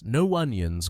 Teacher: the O from no blends into onions